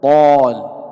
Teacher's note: لاحظ الألف سبقت بحرف الطاء، وحرف الطاء حرف من حروف الاستعلاء، فهو حرف مفخم، فالألف أيضا تفخم